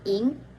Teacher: Ketika melafalkan bunyi ing, posisi lidah mendekati langit-langit keras. Terlebih dahulu memproduksi bunyi I, lalu lidah ditarik ke belakang, akar lidah dan langit-langit lunak bersentuhan. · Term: final sengau belakang